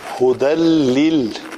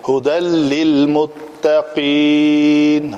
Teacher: تو نون کا مکمل ادغام ہو جاتا ہے، ختم ہو جاتی ہے پڑھنے میں، نظر ہی نہیں آتی کہیں، بلا غنہ